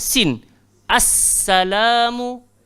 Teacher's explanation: Jadi sin dekat sini, hujung lidah, langgar belakang gigi bawah. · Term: safir